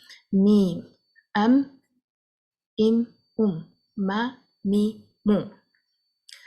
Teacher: This letter mim is accompanied with the sifa, a characteristic of Ghunnah. We call it nasalization in English. It's kind of a humming sound that comes from the nose when you say the letter mim.